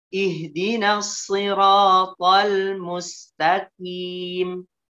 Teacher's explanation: Mustaqim tetap dibaca tebal dalam keadaan kasroh.